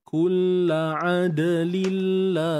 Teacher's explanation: Ya, tanwin jumpa lam idgham bila gunnah.